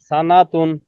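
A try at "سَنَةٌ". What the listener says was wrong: হ্যাঁ, টান নুনে একটু টান হয়, টান হবে না, আবার বলেন।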